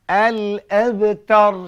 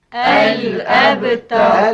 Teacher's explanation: Yang akhir qalqalah. Ada satu bunyi letupan, satu bunyi letakan pada huruf ba ni.